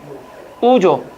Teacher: 우는 거의 다물어놓고 입술만 동그랗게 만들면 되잖아.